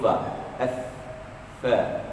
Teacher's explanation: Pasal huruf fa ni keluarnya di bibir. Kalau tuan-tuan sebut huruf fa kan, bibir bawah menyentuh kepala gigi atas.